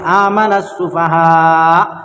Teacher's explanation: الف اور لام کو نہ پڑھیں گے بلکہ بعد والے حرف سے ملا کر پڑھیں گے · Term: حروف شمسی